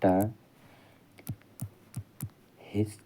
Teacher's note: मूर्धन्य अल्प प्राण अघोष वर्ण का उदाहरण